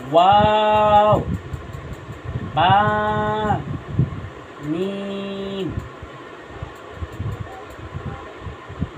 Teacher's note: দুই ঠোঁট হইতে উচ্চারণ হবে ওয়াও, বা, মিম